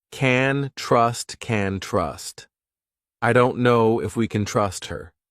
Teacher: We reduce this to can, and it's very unstressed sound. I don't know if we can trust.